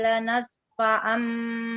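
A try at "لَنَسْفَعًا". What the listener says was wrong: Alirkan lagi sinnya coba. Sin.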